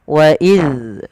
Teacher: ujung lidah tempelkan dengan Gigis dari atas